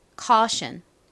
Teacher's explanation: 그 다음 이중모음 AU가 와요. AU는 영국식으로는 O에 가까운 소리가 나는데 미국식으로는 어와 가깝게 발음이 됩니다